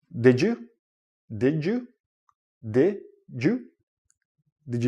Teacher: this goes with the first idea when you're connecting words but when you're connecting words and you have a d and a y together it becomes like a j sound